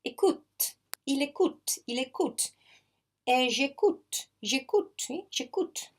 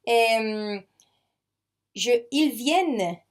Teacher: all these verb endings, they matter only in the writing, but on the sound, they just sound exactly with the last consonant.